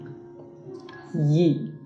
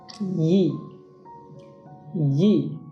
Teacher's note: middle of your tongue will move toward your palate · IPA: /j/